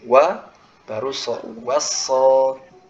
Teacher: uanya tetap tipis. Jangan sampai huruf wawunya ikutan tebal. Bukan wasso, tapi uanya apa namanya tipis dulu.